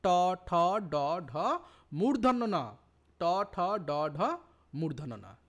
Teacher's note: দেখো মূর্ধন্য নাও মূর্ধা থেকে উচ্চারিত হচ্ছে, ট ঠ ড ঢ পাঁচটাই মূর্ধা থেকে উচ্চারিত হচ্ছে, এবং মূর্ধন্যস্বটাও মূর্ধা থেকে উচ্চারিত হচ্ছে।